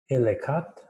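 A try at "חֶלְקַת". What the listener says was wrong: Chelkat. Chelkat has a closed syllable at the beginning. That's chel.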